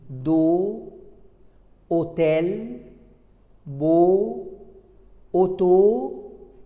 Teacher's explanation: O fermé, c'est-à-dire O fermé dans une syllabe ouverte qui se termine par la prononciation de la voyelle O.